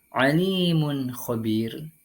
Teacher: dengan membunyikan secara jelas bunyi atau suara dhammatain dan huruf kha tanpa berdengung. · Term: ilhar halqi